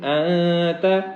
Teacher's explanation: انتا کے اندر نون ساکن کے اوپر ہم اخفا کریں گے